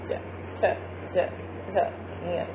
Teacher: तो इसमें आप देखेंगे कि जो हमारी जीभ है वो नीचे के स्थान को स्पर्श करती है, इसलिए इन्हें तालव्य वर्ण कहते हैं।